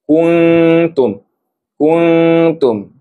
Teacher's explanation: Kita letakkan nun itu ke makhraj huruf ta. Tapi jangan rapatkan ke makhraj huruf ta. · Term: ikhfa hakiki